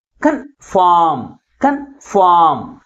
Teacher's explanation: కన్ అనేది తక్కువ ఫోర్స్ గాను ఫార్మ్ అనేది ఎక్కువ ఫోర్స్ గాను పలుకుతుంది · కన్ఫార్మ్ దీంట్లో ఏ సిలబల్ కంటే ఎక్కువ ఫోర్స్గా పలుకుతుంది? Second syllable is pronounced with greater force comparing with first syllable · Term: ప్రైమరీ స్ట్రెస్